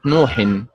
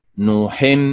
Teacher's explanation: النبر فيها على حركه النون